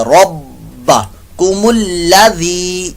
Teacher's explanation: ذی میں زی کی آواز نہ آئے، زا کی آواز نہ آئے بلکہ ذال کی، بغیر سیٹی کے ۔ یا مدہ بھی ہے، لمبا بھی کریں گے۔ ربکم الذی · رب با مشدد کا یہاں پر قلقلہ ہو رہا ہے ، مشدد قلقلہ، یعنی جماؤ یہاں زیادہ، رب کم الذی، ذی